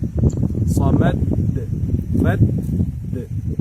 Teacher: প্রথমে মাখরাজ স্পর্শ করে থেমে যাওয়ার পরে তারপরে আবার কালকালার উচ্চারণ শুনতে পাওয়া যায় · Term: ডবল দাল